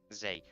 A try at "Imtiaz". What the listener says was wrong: It's not Z. That Z is American.